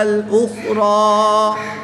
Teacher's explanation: را کے اوپر کھڑی زبر ہے اور وقف کی حالت میں کھڑی زبر کو تبدیل نہیں کرتے، اس لیے یہاں پر ایک الف یعنی 2 حرکات کے برابر ہی کھینچ کر پڑھیں گے